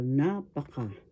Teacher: The accent is in the first syllable, napaka. That means very or too much. · Napaka, first syllable na, second syllable pa, third syllable ka. The accent is in the first syllable, napaka.